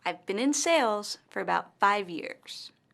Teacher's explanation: In this sentence, the word sales and five years are stressed.